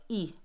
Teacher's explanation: حمزہ کے نیچے زیر ہے، اسے اے نہیں پڑھنا، ای پڑھنا ہے